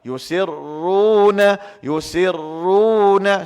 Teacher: Nak memperkemaskan, delaykan sikit ra tu, tasydidkan ra.